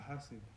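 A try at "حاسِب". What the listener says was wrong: No, because it doesn't have the sukun on that letter.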